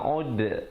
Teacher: pepeskan huruf dal. Jangan pula dal kita bulatkan